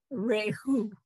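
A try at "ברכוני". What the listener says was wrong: Not Ray, just Re. Chu. Rechu. Not Ruch. Bare. Bare. Re. Just the R sound. Right, it's the schwa. So it's just sometimes it blends with it.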